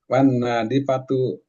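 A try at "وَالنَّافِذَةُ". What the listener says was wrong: Pizatun. Wana, nah panjang sedikit. Wana, wana pizatu. Pi. Wana pizatu.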